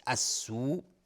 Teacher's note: السوء، مدی که در السوء هست مد واجب متصل به مقدار 4 تا 5 حرکت وجوباً مد میخواد